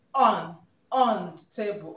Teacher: the emphasized word here is on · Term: emphatic stress